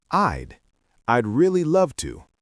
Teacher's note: The D sound is very soft, almost swallowed.